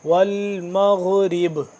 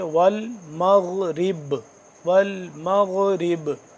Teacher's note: کریں گے تو یہ با ہے یہ ساکن ہو جائے گا، جب با ساکن ہو جائے تو اس کو قلقلہ کرتے ہیں